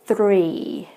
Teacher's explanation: you can tell that my tongue rolls a little bit for the number three